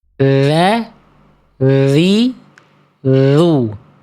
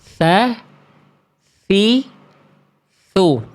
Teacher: Tapi kenapa bunyinya beda? Karena kalau yang huruf tsa tadi dia dikasih aliran udara, dikasih angin, dikasih ee nafas.